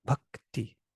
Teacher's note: it's a short vowel but it has two consonants after it k and t that's interesting here's a k and t together bhakti so this